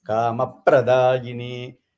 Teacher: You give that extra stress on that pra.